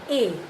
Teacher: It is a front short unrounded vowel, means while articulating it the lips are spread, they don't form, they don't round up, the lips don't round up while articulating these unrounded vowels, we call them as.